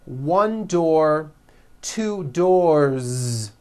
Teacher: 1 door, 2 doors, with a voiced Z ending.